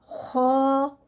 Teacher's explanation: ये हरूफ हल्की है, हलक का सबसे ऊपर वाला हिस्सा है, वहाँ से अदा होगा · ज़ुबान की जड़ उठेगी और फिर मुंह को हवा से भरेंगे और फिर ये अदा होगा ख़ा। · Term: मोटा